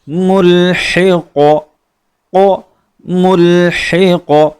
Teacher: آخری لفظ لفظ قوف، قوف کا مخرج زبان کی جڑ اوپر تالو کے نرم والے حصے سے مل کر قوف ادا ہوتا ہے، قوف کو پر کیا جاتا ہے، موٹا کیا جاتا ہے، اور یہاں ہم اپنی دعا کو ختم کرتے ہیں تو قاف پر ہم سکون پڑھیں گے، قاف کو ساکن پڑھیں گے، جس کی وجہ سے ہم یہاں قلقلے کو بہت ہی واضح انداز میں پڑھیں گے۔